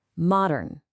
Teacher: Hear that ah sound? That's a short O.